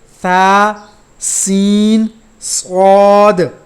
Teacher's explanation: ثا کو نرمی سے پڑھیں گے، سین اور صاد کو سیٹی کی آواز نکال کر پڑھیں گے